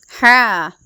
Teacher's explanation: തൊണ്ടയുടെ മധ്യത്തിൽ നിന്നുമാണ് ഹ എന്ന അക്ഷരം പുറപ്പെടുന്നത്